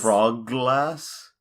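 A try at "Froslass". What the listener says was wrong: Frostlass. Where are you getting this G from?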